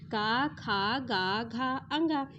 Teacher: तो आपका ख कहां आ गया कंठ से आ गया